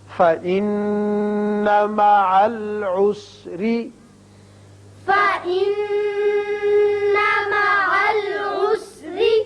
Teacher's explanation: نون مشدد ہے، غنہ کریں گے اور یہاں را کے نیچے زیر ہے، را باریک پڑا جائے گا۔